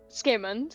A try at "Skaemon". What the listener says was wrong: There is no D at the end.